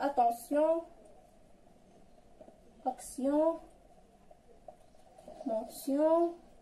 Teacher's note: ايون كتنطق فاش كتكون مع تي ما كتقراش تيون، كتقرا سيون. تي مع ايون كتقرا سيون، كتكون غالبا في الاخر تاع الكلمه بحال اتونسيون attention, action, mention.